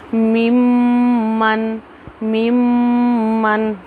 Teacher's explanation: मुंह को बंद करेंगे, नाक से आवाज़ नाक से निकलेगी, मुंह से नहीं निकलेगी।